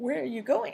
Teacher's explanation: has basic intonation with going receiving the most stress, or focus, in the sentence